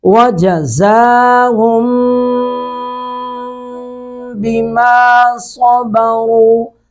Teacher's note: صاد کو پر کر کے پڑھیں گے اور سیٹی بھی آئے گی